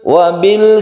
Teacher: Wabil sifatnya lam sama dengan ain, itu adalah tawassut atau tengah-tengah. Dia bukan qalqalah, dia juga tidak boleh terlalu ditekan dan tidak boleh terlalu dilepas.